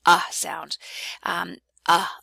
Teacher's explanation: wedge which is not a reduced vowel that means it's a fully articulated vowel